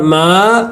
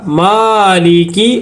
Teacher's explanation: کھڑا زبر ہے، ایک الف کے برابر کھینچ کر پڑھیں گے